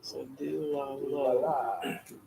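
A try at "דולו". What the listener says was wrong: Not a vav. Do la lu. We had the wrong vowel. dagesh in it, or is there a dagesh in that?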